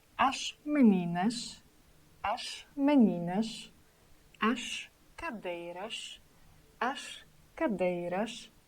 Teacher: letter S situated at the end of the word. It should sound sh.